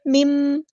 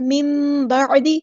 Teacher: یہاں پر نون ساکن کے بعد با ہے تو اقلاب ہو رہا ہے تو میم کی آواز میں مدغم کریں